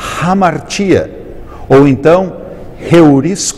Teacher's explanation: o espírito áspero dá um som diferente um som aspirado a letra Inicial